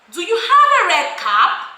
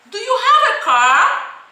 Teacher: Everything is going up. Everything is using a rising intonation. Why? Because they are questions that requires yes or no.